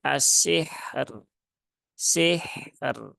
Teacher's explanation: berarti ro yang sukunnya dibaca dengan tipis ya bukan tebal · Tunaikan dulu rokhawah dari ha, baru setelah itu tunaikan tawasut dari huruf ro. Dan roknya dibaca tipis.